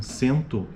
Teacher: sento é uma vogal nasal em meio de palavra